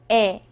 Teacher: 애보다 입을 작게 벌리고 옆으로 당겨서 내는 소리입니다